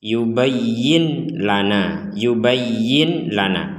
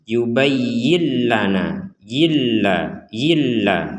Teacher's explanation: nun sukun bertemu lam maka kita membacanya cara membacanya adalah memasukkan Nun ini kepada lam